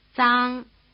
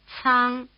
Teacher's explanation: they stand for unaspirated and aspirated consonants that resemble the TS in tsetse fly. That is, if you bother to pronounce both the T and the S in tsetse fly.